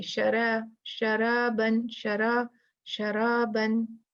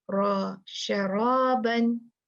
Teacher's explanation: रा पीछे से जुबान उठाई जाएगी। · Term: मोटा